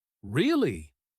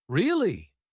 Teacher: when we ask a question like really, our voice rises. If we're surprised, it might rise even more. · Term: rise and fall